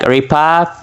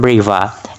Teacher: stops become fricatives